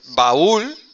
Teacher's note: el golpe de voz va en la cerrada, no en la abierta